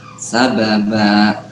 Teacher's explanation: Ya, betul bacanya sababa. Jadi dipanjangkan ya 2 harokat.